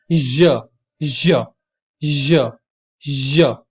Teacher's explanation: ज में आपकी जो टंग का टिप है वो आपके अपर पैलेट के बिल्कुल पैरेलल होता है, बल्कि टीथ के बिल्कुल क्लोज होता है, क्लोज प्रॉक्सिमिटी में, लेकिन टच नहीं करता है, और उसके बीच में से वो आवाज निकलती है, ज, ज, ठीक है।